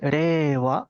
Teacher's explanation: Pareciera que la I como que no suena mucho, entonces la E cubre ese tiempo.